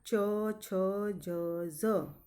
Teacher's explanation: જ્યારે તમે ઉચ્ચાર કરશો ત્યારે તમારી જીભ તાળવા તરફ જશે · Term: તાલવ્ય